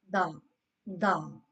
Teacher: Dal pronounced from the tip of the tongue touching the gums of front teeth, two front teeth